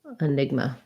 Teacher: the letter a at the end is going to be a schwa so it sounds like enigma that's an enigma okay another difficult